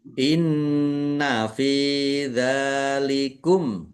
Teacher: nun tasdid dibaca ghunah atau mendengung. Tahan biar tampak mendengungnya. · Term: gunnah